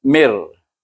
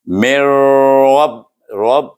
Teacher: Mir ada getaran. Ra, huruf ra ada getaran. Ujung lidah kita bertentangan dengan gusi gigi kacip. Atas gigi kacip kita.